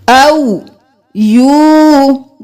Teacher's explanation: قاف موٹا بھی قلقلہ بھی، نون پر تشدید ہے تو غنہ